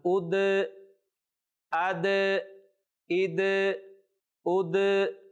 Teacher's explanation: دال کو ظاہر کر کے پڑھا جا رہا ہے کیونکہ دال بھی حروف قلقلہ میں سے ہے